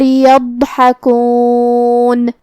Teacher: ضاد حروف تفخیم میں سے بھی ہے تو ہمیں اسے بھاری آواز میں منہ پھلا کے ادا کرنا ہے جو کہ اس پہ جزم ہے تو ہمیں ضاد کو ظاہر بھی کرنا ہے. حرف الحاء کو ہم حلق کے درمیان والے حصے سے ادا کریں گے. آخر میں نون پہ رکیں گے تو اس پہ جزم سے رکیں گے تو ہمیں نون کو ظاہر کرنا ہے. · ضاد کی ادائیگی زبان کے کروٹ اور اوپر کے داڑھوں کے جڑ سے ہے. ضاد حروف تفخیم میں سے بھی ہے تو ہمیں اسے بھاری آواز میں منہ پھلا کے ادا کرنا ہے جو کہ اس پہ جزم ہے تو ہمیں ضاد کو ظاہر بھی کرنا ہے. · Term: حرف الضاد